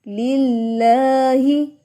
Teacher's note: اللہ کے نام سے پہلے زیر، تو اللہ کا نام باریک